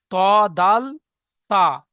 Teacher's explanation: জিভের আগা এবং উপরে দুটি দাঁতের গোড়ার সাথে লাগিয়ে উচ্চারিত হয়